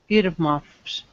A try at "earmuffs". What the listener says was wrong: Yeah, can you try not to flip your R? Earmuffs.